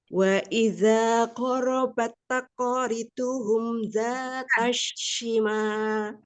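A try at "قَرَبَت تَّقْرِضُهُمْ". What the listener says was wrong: Umi tahan karena ada tasdid. Ghorobat taqoriduhum. Ya, karena taknya bertasdid. Jadi ghorobat taqoriduhum.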